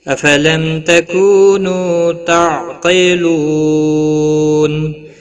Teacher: لو واو مدہ ہے، ایک الف کے برابر کھینچ کر پڑھیں گے۔ نون وقف کی صورت میں نون ساکن پڑھا جائے گا، وقف بالاسکان ہوگا، 3 سے 5 الف کے برابر کھینچ کر وقف کریں گے